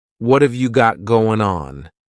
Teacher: What have, so what and have are going to be pushed together. · That final G in the word going is going to be cut off, and we'll just say goin'.